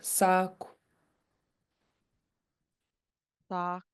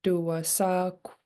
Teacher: this last K is rounded, but it's at the top of your mouth. It's not underlined, so it's not at the back of your throat.